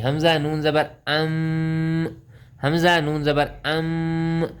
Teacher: یہاں پر دیکھیں حمزہ نون زبر ام، یہاں نون ساکن ہے، نون کے اوپر جزم ہے، نون ساکن کے بعد حروف اخفا میں سے تا آیا ہوا ہے، یہاں پر اخفا کا قاعدہ لگے گا، ہم آواز کو ناک میں چھپا کر پڑھیں گے، مطلب غنہ کر کے پڑھیں گے۔